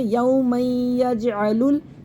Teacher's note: یہ حمزہ وصل گر جائے گا، لام کو لام ساکن سے ملا دیں گے